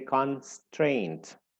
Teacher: con is the first syllable, and then strained, and the one that is stressed is strained.